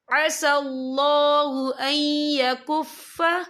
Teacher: نون ساکن کے بعد جو ہے یا آ رہا ہے، اور یا جو ہے حروف یرملون میں سے ہے، تو یہاں پر ادغام ہوگا، تو ہم اسے تھوڑا سا غنّے کے ساتھ پڑھیں گے۔